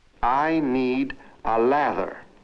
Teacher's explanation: Now, what happens when a Latin American encounters an English word like ladder? He tends to pronounce it lather.